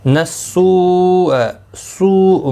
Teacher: سوء مد متصل ہے، 4 الف کی مقدار کے برابر کھینچ کر پڑھیں گے